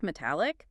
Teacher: when you transform the word into an adjective, metallic, the stress naturally shifts to the middle of the word